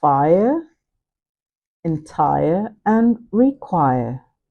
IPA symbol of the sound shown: aɪə